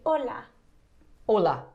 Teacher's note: the h is silent uh you kind of just pretend it's not there